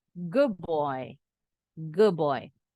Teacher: d-nya berubah bunyi jadi sama seperti B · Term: assimilation